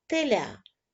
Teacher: Ми чуємо перший звук т це звук приголосний твердий